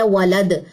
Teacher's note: دال جزم کلکلا لیتی ہے